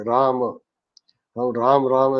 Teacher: जब तक आपके होंठ खुलेंगे नहीं, तब तक म का उच्चारण पूरा नहीं हो सकता।